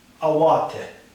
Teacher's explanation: the emphasis is given to the middle syllable in the three syllable constructions